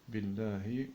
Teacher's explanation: Hamzat wasl, ça veut dire que quand on lit, alif n'est pas prononcé